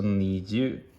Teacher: there's actually two u at the end, so it's basically a lengthened u.